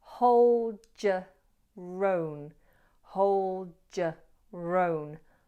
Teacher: we have an intruding R popping in here between your and own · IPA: /həʊl djə rəʊn/